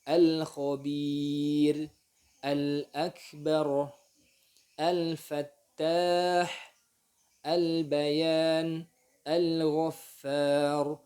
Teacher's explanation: Alnya dibaca dengan jelas, dibaca dengan izhar.